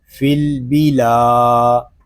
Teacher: یہاں لام کو ایک الف تک کھینچ کر پڑھیں گے کیونکہ یہاں پہ الف مدہ ہو رہا ہے